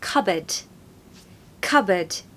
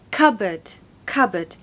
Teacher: it's actually a silent P so the hack here is that it is cupboard cupboard stress the first syllable